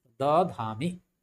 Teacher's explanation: दो दो महाप्राण आ गया है, तो एक महाप्राण चेंज होकर के तीसरा अक्षर यानी अल्प प्राण में बदल गया